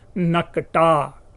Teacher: नाक कटा में क क आ रहा था, एक क का लोप।